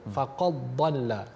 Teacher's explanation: Tidak ada mendengar athar dal, tidak mendengar kesan pada huruf dal tersebut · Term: idgham